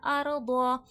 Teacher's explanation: ضاد حرف مستعلیہ ہے موٹا حرف ہے موٹا کر کے پڑھا جائے گا